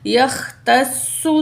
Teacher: تا کے زبر کو سواد تشدید سے ملائیں گے، سواد پیش سو، یختصو، تشدید کی وجہ سے سواد کو ہم جو ہے بھاری پڑھیں گے، یختصو برحمتہ من یشاء واللہ ذو الفضل العظیم۔